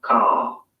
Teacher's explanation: in car, the vowel sound is lengthened in place of the R sound.